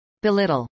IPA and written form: bɪˈlɪtəl (belittle)